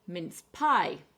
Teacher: we're going to stress the second syllable for this one